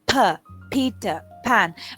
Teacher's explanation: So when it is stressed, when it is accented, we have a different aspirated voice for p sound.